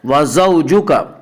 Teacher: واولین وہ واو جو ساکن ہو اس سے پہلے زبر ہو، واولین کو نرم آواز کے ساتھ پڑھیں گی